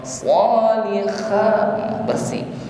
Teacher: ha bersih, ha bersih, jangan sampai ada keder atau ngorok.